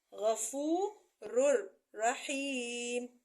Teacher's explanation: اس کا مثلاً دیکھیے غفور الرحیم، آپ یہاں دیکھیے کہ را کے اوپر 2 پیش ہیں، یہ نون تنوین ہے، را 2 پیش رن، اگر اسے را سے ملا کے پڑھیں گے را پیش را رر ہو جائے گا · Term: ادغام کبیر بغیر غنہ